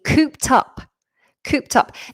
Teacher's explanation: Cooped up. Now this ends with an ed, but it sounds like a t.